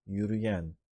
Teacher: Bunları ayırmam gerek. I need to separate the ü from e. So I insert a y buffer.